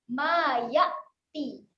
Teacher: Huruf hamzah berhati-hati kena tahan sahaja, jangan lantunkan